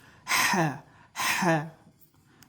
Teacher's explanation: Boğazın ortasından tələffüz olunur.